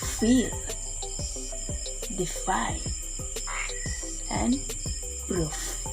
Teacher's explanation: are coming together to create the sound the second labview Dental the obstruction of the Airstream is made by the top of teeth touching the lower lip